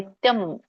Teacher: ರಾಗವಾಗಿ ಹೇಳುವಾಗ ಕೂಡಿನೇ ಹೇಳ್ಬೇಕಾಗುತ್ತೆ. ನಿತ್ಯಂ ಅಲ್ಲಿ ಅನುಸ್ವಾರ ಇದೆ, ಸೊ ಹಾಗಾಗಿ ನೀವು ಅದನ್ನ ಮ ಅಂತ, ನಿತ್ಯಂ ಮ ಬರುತ್ತೆ